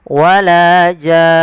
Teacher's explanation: panjangkan dulu jannya 6 harokat, kemudian masukkan nun dan ditahan baru dimatikan nunnya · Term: mad lazim kalimi mukhaffaf